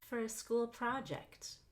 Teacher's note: We actually just stress project for a school project. So you'll go up on pra and down on ject for a school project.